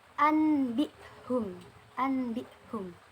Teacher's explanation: Dan dalam membaca iqlab di sini, pembacaan nun mati atau tanwinnya dirubah menjadi mim mati disertai dengan mendengung. Jadi pembacaan iqlab yaitu menukar atau mengganti nun mati atau tanwin menjadi huruf mim mati dan dibaca dengan mendengung.